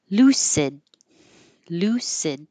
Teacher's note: You won't hear the D by itself, but lucid enough. You'll hear it.